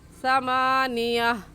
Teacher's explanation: تا کی جگہ جو ہم نے ہا پڑھنا ہے، وہاں پر ہم ہا کی جگہ الف نہیں پڑھیں گے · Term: گول تا